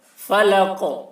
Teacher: قاف میں قلقلہ ہوگا